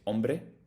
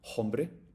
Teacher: we don't pronounce the h in the beginning you say ombre not hbre same as French but other than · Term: silent letters